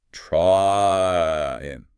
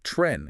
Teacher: You start at A and you glide up to E. Your tongue actually moves as you say the word. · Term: diphthong